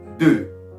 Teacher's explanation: When you want to pronounce number 2 in French, you're supposed to say D, but round your lips. When you round your lips, it's going to sound like deux.